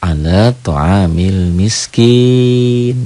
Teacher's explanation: Kalau dihentikan ala ta'amil miskin jadi panjang. Itulah mad aurid lis sukun.